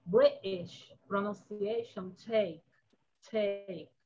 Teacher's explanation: also in the British pronunciation, take. It's an aspirated t.